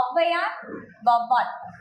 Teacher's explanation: சொல்லின் முதலில் வருது அப்படின்னா 1.5 மாத்திரை அளவில் ஒலிக்குது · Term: அவகார குறுக்கம்